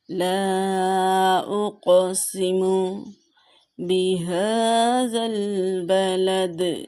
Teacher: لا اقسم، یہاں پہ الف مدہ ہے اور قاف حروف کلکلہ میں سے ہے، اسے جنبش دے کے پڑھیں گے۔ اور یہاں پہ مد منفصل کا قاعدہ ہو رہا ہے، حرف مدہ کے بعد حمزہ دوسرے کلمے میں ہے